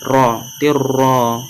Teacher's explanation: Huruf ro itu termasuk huruf idgham bila gunnah maka dimasukkan tanpa disertai dengung. Ro-nya itu ditafkhimkan, ditebalkan, ro, tirro.